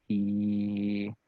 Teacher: So we use the I symbol to represent the vowel E, C, and if you hold that, if you hold E, you can feel that your tongue is very close to your alveolar ridge